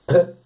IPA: pʰ